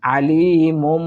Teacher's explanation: দ্বিতীয় মিমে আমরা সাকিন দিয়ে গুন্না করে পড়ার চেষ্টা করব